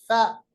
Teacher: فا کا جو مخرج ہے یہ اوپر والے 2 دانت ثنایا علیہ اور نیچے جو ہونٹ ہے اس کی تری والا حصہ ملاتے ہیں